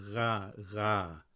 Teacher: It's like you're gargling. This sound doesn't exist in English.